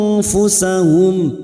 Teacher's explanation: nun sukun bertemu Fa Ikfa Hakiki kita samarkan bunyi nun